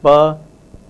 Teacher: the bilabial voiceless plosive pa